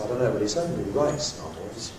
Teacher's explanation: novels is repeated, doesn't need to be focused on, but writes does need to be focused on, so the nucleus goes there.